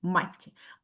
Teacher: в імені хлопчика є подовжений м'який приголосний звук